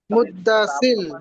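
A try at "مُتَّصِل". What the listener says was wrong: মুদ্দা হবে না, মুদ্দা হবে না, মুত্তা মুত্তা।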